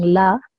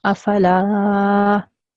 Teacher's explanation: And if the previous letter has a fatha and the letter after is an alif, then this alif becomes a mud letter, okay? And mud letter just means that you have to make the sound of the lam 2 seconds long. You have to make it a bit long.